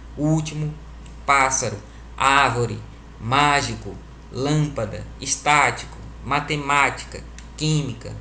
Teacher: Se a sílaba mais forte é a antepenúltima, elas recebem o nome de proparoxítona. Repetindo, proparoxítonas são aquelas em que a terceira sílaba de trás para frente, ou seja, a antepenúltima, soam mais fortes · a gente percebe que a sílaba forte é a terceira, é a antepenúltima. Se a sílaba mais forte é a antepenúltima, elas recebem o nome de proparoxítona.